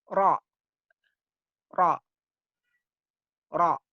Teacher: Dekat dengan makhraj nun, tapi masuk pada punggung lidah.